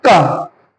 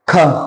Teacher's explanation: जैसे मैं उच्चारण करता हूं क, ख, तो क के उच्चारण में वायु बहुत कम आई और ख के उच्चारण में अधिक, क, ख।